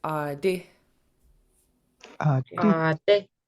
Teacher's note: The I in this word is pronounced shorter than a double E, but a very similar sound.